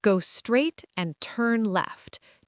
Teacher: And notice the rhythm. Go straight and turn left. two stressed beats.